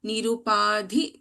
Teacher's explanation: Dha is a Mahaprana Akshara.